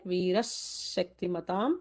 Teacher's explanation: Vira Shaktimatam. So Viraha, visarga followed by Shakti is going to cause an extra sibilant there.